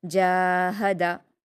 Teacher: یہ ہا جو ہے وہ سینے کی طرف سے ادا ہونے والی ہا ہے، اس لیے آپ حلق کے درمیانی حصے سے نہیں ادا کریں گے. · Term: چھوٹی ہا